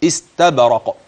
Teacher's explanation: والباء تقلقل والقاف عند الوقف تقلقل